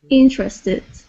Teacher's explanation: Okay, so instead of saying interested, okay, it would be interested with the accent at the very beginning